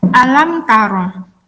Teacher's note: Di sini ada mim sukun yang bertemu dengan huruf ta, maka bacaannya adalah idhar syafawi. Idhar syafawi wajib dibaca jelas, tidak boleh didengungkan, tidak boleh dibaca samar-samar.